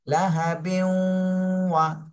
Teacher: তানভিনের পরে ঈদগামে বা গুন্নার হরফ আসছে ওয়াও, এজন্য গুন্না সহ মিলাতে হবে। লাহা বিউ, ঠোঁট গোল করে ফেলতে হবে, বিউ।